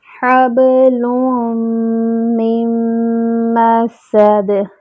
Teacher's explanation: میم کو میم سے ملائیں گے، نون نہیں پڑھیں گے. من مسد، میم پہ جو ہے وہ جمع ہوگا، سین میں سیٹی کی آواز آئے گی اور دال پہ قلقلہ کریں گے.